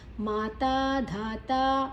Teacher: ಮಾತಾ ಧಾತಾ ಎಲ್ಲ ದೀರ್ಘಾಕ್ಷರಗಳು. ಧ ಮಹಾಪ್ರಾಣ.